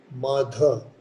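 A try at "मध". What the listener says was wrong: Make it short. Ma, madha. Mahaprana is, that is Mahaprana. But ma, it is not ma. Ma, dha. Madha.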